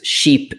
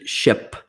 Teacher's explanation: But number two is the tongue is actually very similar. So E has the tongue at the very top of the mouth in the front, and I has it near the top, but just beneath it. And you have some tenseness in your lips.